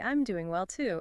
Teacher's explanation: Stress on doing and to.